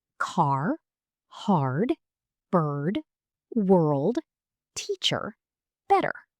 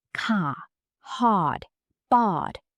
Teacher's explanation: American English is known for its strong R. Yes, we pronounce the R clearly, especially after vowels. · In some British accents, the R disappears.